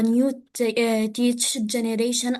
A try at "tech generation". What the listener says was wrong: It's not teach, it's tech.